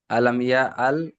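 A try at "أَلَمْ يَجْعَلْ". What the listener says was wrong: আলাম ইয়াল নয়, ইয়াজআল। ইয়াজ, ইয়া জিম জবর ইয়াজ, জিম কলকলা হবে, কফ বা জিম দাল হরফে কলকলা, পাঁচটি অক্ষরের মধ্যে জিম রয়েছে।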